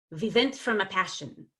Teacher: evaluator yes I think it was the general evaluator yesterday so he did not get those lips forward right the lips were too close to the teeth and a V came out instead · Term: W's became V's